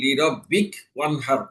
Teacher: জবরের স্থলে আমি সাকিন দিয়ে পড়লাম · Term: হরকতের স্থলে সাকিন পড়া